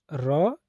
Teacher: जिनके उच्चारण में जीभ तालू से लुड़क जाए तो उन्हें क्या कहते हैं दोस्तों लुंठित व्यंजन · उसके बाद है लुंठित र, जिनके उच्चारण में जीभ तालु से लुढ़क जाए